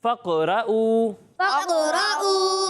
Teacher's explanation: कॉफ की आवाज़ लौटती हुई महसूस होगी, यानी फ़क़रऊ। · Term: कलकला